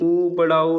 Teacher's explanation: छोटा ऊ और बड़ा ऊ ये हमारा ओष्ठ में आता है।